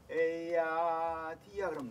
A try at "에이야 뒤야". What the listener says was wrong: 너무 높지 뒤야 너 어떻게 부르려고 그래요 조금 내리세요